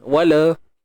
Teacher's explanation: Matikan lam dan pastikan jangan lantun.